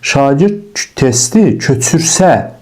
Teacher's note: Şagird testi köçürsə, vurğu gedir sona. Köç sözün köküdür.